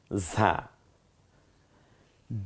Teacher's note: ঝিঝি আওয়াজে বাতাসটা বেরিয়ে আসবে, জিব্বাটা খানিকটা পাতলা হয়ে যায় ভেতরে